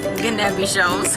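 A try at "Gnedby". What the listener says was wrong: the G is silent and then it's just Nebi.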